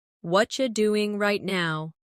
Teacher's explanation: In natural speech, what are you becomes whatcha.